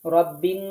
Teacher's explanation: এখানে রাব্বি মতো হয়ে যাচ্ছে। রা হবে না র হবে।